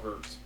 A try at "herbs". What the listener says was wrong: Why do you pronounce the H?